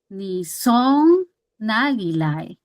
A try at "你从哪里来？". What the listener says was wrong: Very good. It's harder to go up, but you need to go up.